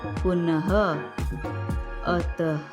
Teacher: विसर्ग का उच्चारण किस व्यंजन के समान होता है? ह के समान होता है।